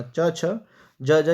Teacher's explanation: च वर्ग तो च छ ज तालु से बोले जाते हैं